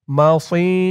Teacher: সদের উচ্চারণটা খেয়াল করুন একেবারে সি বলা যাবে না সি বললে সিনের উচ্চারণ হয়ে যাবে বলতে হবে মাসি র একালিফ টান দুই জবরে অক্ফ হয়েছে তাই